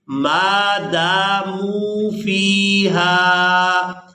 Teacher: یہاں پر ہم نے دال کو الف مدہ کی وجہ سے کھینچ کر ادا کرنا ہے اور اس لفظ کو اس طرح سے ادا کریں گے ما داموا فیہا.